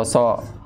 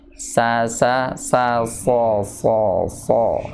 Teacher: Tapi tidak menaikkan pangkal lidah. Karena kalau alamiahnya huruf so itu adalah ketika si pangkal lidahnya naik